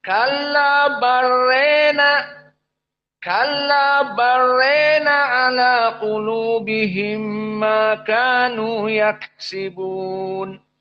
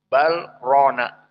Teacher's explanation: Kalabar rona diidghamkan. Lam kepada ro.